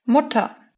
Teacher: Le R en fin de syllabe se transforme en une sorte de A court comme dans Mutter, mère.